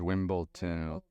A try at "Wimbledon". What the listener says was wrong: Please don't say ton. D-O-N. Wimbledon. Wimbledon. That's so American.